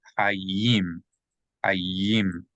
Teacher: So if you see a dot in the yud, inside the yud, that means that yud is going to be pronounced as a Y sound. So not just the vowel E, but Y-E.